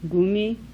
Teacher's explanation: Voiced velar plosive.